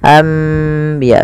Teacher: Membalikkan suara nun menjadi suara mim. Awalnya anbiya Allah, karena bertemu dengan ba maka diganti dengan mim, maka dituliskan di atasnya dengan bentuk mim ini agar dibaca anbiya sambil ditahan 2 harokat. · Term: iklab